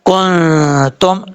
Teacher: کاف نون پیش کن، تا میم پیش تم، کن تم، نون ساکن کے بعد تا آ رہا ہے حروف اخفا میں سے، تو یہاں پہ نون ساکن کا اخفا ہوگا، ایک الف کی مقدار